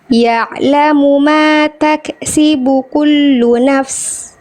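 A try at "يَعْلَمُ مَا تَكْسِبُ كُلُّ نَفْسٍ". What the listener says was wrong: Jelaskan dulu nafs. Paknya jelaskan, jangan sampai nyampur ke sin. Ya'lamu ma taksibu kullu nafs. Kullu nafs. Nah, jadi jelaskan dulu fa-nya.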